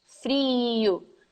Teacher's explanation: when we are pronouncing the word frio in Minas, it's kind of closer to the long E in English. It's a double I, frio.